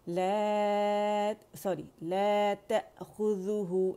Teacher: لا صرف 2 ہے کیونکہ مد اصلی ہے